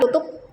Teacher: konsonan P pada kata tutup diucapkan secara tidak lepas